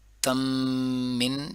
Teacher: تم من، اس میں ادغام مع الغنہ ہو رہے ہیں، لیکن مر ربک جو ہے اس میں ادغام بلا غنہ ہو رہا ہے.